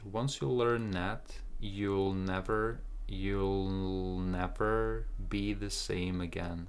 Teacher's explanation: N is stronger than TH, so we cancel the TH.